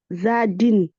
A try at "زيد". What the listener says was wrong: Alors, ici, c'est Zaï. Là, il y a un ya, du coup, on dit Zaïd.